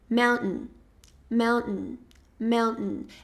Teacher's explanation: E aí existe uma pausa quando a gente vai pronunciar esse T.